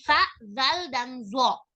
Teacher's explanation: Semua huruf ini keluar dari satu makhroj, yaitu ujung lidah dan dua gigi seri atas. Satu sama lain tidak dapat terbedakan, melainkan dengan perbedaan sifat-sifat.